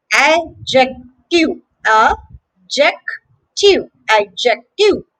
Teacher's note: the letter D is actually silent here.